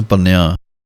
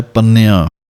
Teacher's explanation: ਆਮ ਹੀ ਸਿੰਘ ਅੱਧਕ ਲਾ ਕੇ ਪੜ੍ਹ ਜਾਂਦੇ ਹਨ ਪੰਨਿਆਂ, ਲੇਕਿਨ ਟਿੱਪੀ ਦੀ ਆਵਾਜ਼ ਹੈ ਪੰਨਿਆਂ